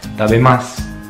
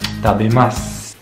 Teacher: le se à la fin n'est pas vraiment prononcé.